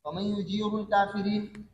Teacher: یا ساکنہ کی وجہ سے را کو باریک کرتے ہیں اور کافرین کے اندر تقلیل کرتے ہیں. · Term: را باریک